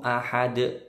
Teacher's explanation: Karena ketemu alif matsilah tawilah, jadi panjangnya 5 ketukan. Ahad, dalnya mantul besar, qalqalah kubro